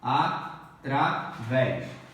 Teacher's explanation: A última sílaba é tônica. Então é uma oxítona.